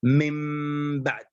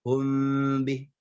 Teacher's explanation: Jadi bibir merapat dengan bibir walaupun dengan tanpa menekan, ya. Tetapi ketika dalam keadaan ikhfa syafawi maka adanya furjah, adanya jarak antara dua bibir yang sangat tipis · di dalam iklab maka itbaqnya secara sempurna. Jadi bibir merapat dengan bibir walaupun dengan tanpa menekan